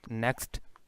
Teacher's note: In next, if we transcribe it, so we will transcribe it like that, next. So we have k, s, t, 3 consonants at coda position.